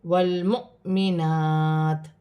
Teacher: کھڑی زبر ہے، الف کی مقدار کھینچ کر پڑھا جائے گا، وف کی صورت میں زیر گر جائے گی اور تا ساکن ہو جائے گی